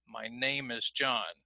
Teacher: Now again, in my demonstration, I've highlighted here, so my and is now are going to be reduced in sound